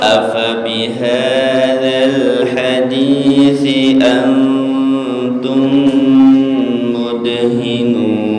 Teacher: ikhfa'nya, idghamnya ditahan. Antum ya, ditahan semua.